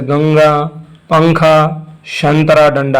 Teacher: अंग के उच्चारण में हवा केवल नाक से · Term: अनुस्वर